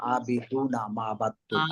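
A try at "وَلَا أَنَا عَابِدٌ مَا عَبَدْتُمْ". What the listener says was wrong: আবিদুনা নাই তো, আবিদুম মা আবাদতুম।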